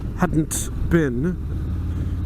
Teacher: When you're saying that, hadn't been, you've got to stop your production of noise for a second for the hadn't. And nobody pronounces the T in American English.